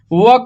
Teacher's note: तो व का स्थान दंतोष्ठ है।